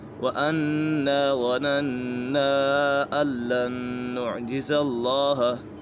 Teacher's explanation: مد کے بعد حمزہ دوسرے کلمے میں ہے تو اسی وجہ سے مد منفصل ہوگا